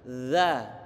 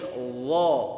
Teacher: Huruf dzal itu dia tipis, yang dha tebal.